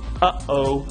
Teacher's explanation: Now, that's the consonant formed by the audible release of the airstream after complete closure of the glottis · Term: glottal stop